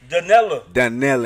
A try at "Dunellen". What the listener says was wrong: You gotta put an N on the. You gotta put an N on the end.